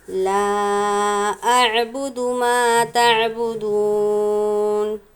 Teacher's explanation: دیکھیں گے لام پر مد ہے، حروف مدہ کے بعد حمزہ دوسرے کلمے میں ہو تو مد منفصل ہوتا ہے، 2 یا 3 الف کی مقدار ہم یہاں پر کھینچیں گے، مد کریں گے۔